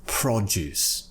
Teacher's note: the noun produce we're pronouncing it with the first syllable being stressed